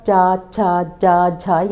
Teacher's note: हमारी जो जीवा है ऊपर तालु का स्पर्श करती है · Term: तालव्य